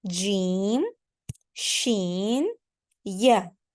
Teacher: Jim, Sheen, and Ya are going to be pronounced from the middle of our tongue